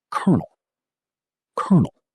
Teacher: The L after co is completely silent. The 1 at the end sounds like null.